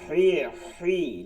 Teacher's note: হি হালকের মধ্যখান দিয়া